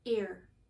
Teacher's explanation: care has just a short e sound the same one as you have an egg but it's r colored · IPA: /ker/